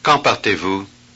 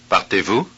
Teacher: the first one goes down and the second one goes up.